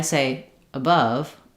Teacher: when I say above, you can hear the quality of the two schwa sounds is a little bit different. This one is very short, reduced, not much sound there.